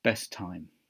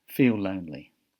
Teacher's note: with the same sound or a similar one in these cases instead of saying this same sound twice the two words share the linking sound